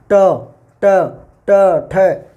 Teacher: तो ये जो जीभ होती है ना, जीभ यूं मूर्धा की तरफ से पलट कर आती है, यूं यूं, ट ठ, ये ट ठ ड ढ ट बोल के देखो, थोड़ा सा जीभ यूं पलटा खाएगी, ऊपर की तरफ से आएगी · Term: मूर्धन्य